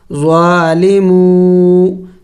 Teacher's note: واو مدہ ہے، ان کو ایک الف کے مقدار لمبا کریں گے